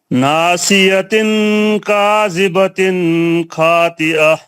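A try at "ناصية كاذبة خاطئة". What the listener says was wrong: کاذبتن میں غنہ کیوں کر رہے ہیں آپ؟ پھر پڑھیے دوبارہ صحیح کریے اس کو.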